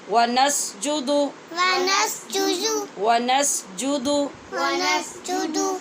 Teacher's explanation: ونسجد اس دال کو لمبا نہیں کرنا اس لیے کہ یہاں صرف پیش ہے